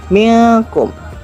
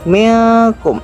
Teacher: Nun sukun dan kaf dibaca samar. Ada dengung namun tidak jelas. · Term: ikhfa